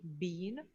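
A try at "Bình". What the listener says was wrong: It's Binh. It's kind of it kind of goes down. Binh.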